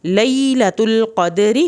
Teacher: را کے نیچے زیر ہے، را پتلا پڑا جائے گا